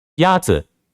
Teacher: The first tone is a high, level tone.